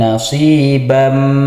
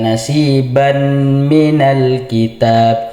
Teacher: tanwin di sini dimasukkan ke huruf mim nasibam. Jadi kalau kita baca nasiban minal kitab itu salah. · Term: idgham bighunah